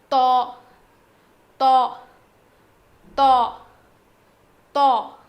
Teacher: زبان کی نوک کو سامنے کے دو دانتوں کے جڑ میں لگانے سے ادا ہوتا ہے